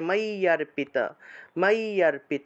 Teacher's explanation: জ ফলা আছে অন্তস্থ জ আছে তাহলে মাইয়ারপিত মাইয়ারপিত এভাবে অর্থাৎ জফলার পরিবর্তে ই উচ্চারণ হলো